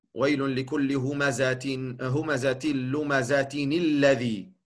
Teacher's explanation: De noon die je eigenlijk niet schrijft, niet ziet. Alleen maar hoort. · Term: tanwin